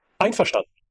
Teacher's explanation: You stress on ein.